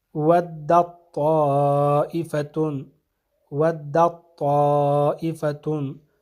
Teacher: ودت میں جو تا ہے یہ ادغام ہو جائے گا طائفتن کے حرف طا میں، تو یہاں پہ تا کی آواز نہیں آئی بلکہ طا کی آواز آنی چاہیے.